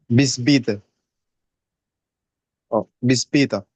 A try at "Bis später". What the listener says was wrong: Tiene que oírse más el später.